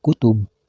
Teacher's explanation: harus dibaca kutub karena menjadi qalqalah kubro